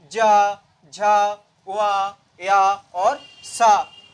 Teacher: आपकी जीभ के अगले भाग का जो हिस्सा है वो तालु को स्पर्श कर रहा है